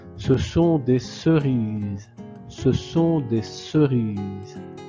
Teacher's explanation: le S c'est entre le I et le E. Deux voyelles. Donc le S se prononce Z.